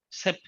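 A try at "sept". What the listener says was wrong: And at the end, you have to get a t sound. T, set.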